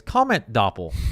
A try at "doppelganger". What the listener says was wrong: No, doppelganger. You got to say the whole word.